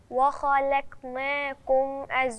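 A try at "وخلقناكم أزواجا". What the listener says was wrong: لا ما أنا مش عايزاكي ترققي اللام وبعدين ترققي القاف. يعني لازم أنا أوزن ما بين الخاء والقاف واللام اللي في النص ما بينهم بالإيه؟ بضبط النطق بتاعي.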